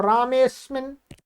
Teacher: यहाँ पर कोई ह्रस्व अ था, वो हट गया, संधि हो गई है